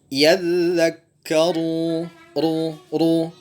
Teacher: Ketika dia berharokat dhammah, maka dia ditebalkan. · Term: ra yang tebal